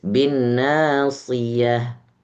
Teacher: si jangan terlalu tebal seperti so. Dia karena berharokat kasroh jadi sedikit lebih tipis.